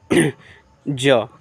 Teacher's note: कहां से तो तालू से आने वाला है ज तालू से ज का उच्चारण स्थान तालू